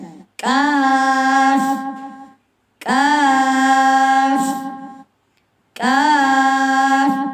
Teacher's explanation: یہ جہاں پر بھی آئے، حروف کے درمیان میں آئے، حروف کے شروع میں آئے، یا جہاں بھی آئے، ہم اس کو باریک کر کے ہی پڑھیں گے۔ اس میں کاف میں تھوڑا سا ہمس بھی پایا جاتا ہے، زیادہ ہمس نہیں، ہلکا سا ہمس بھی پایا جاتا ہے۔ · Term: باریک کاف